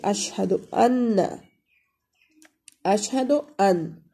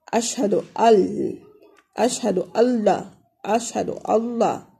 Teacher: تو یہاں پہ دیکھیں اشہد ان، اشہد ان، اشہد ان ہے لیکن ہم یہ نون نہیں پڑھیں گے، اشہد اشہد اللہ، اشہد اللہ۔ تو ہم یہ نون جو ہے اس کو ادغام کر لیتے ہیں، اس کی تلفظ نہیں ہوتے اور لام کے اوپر شد آ جاتا ہے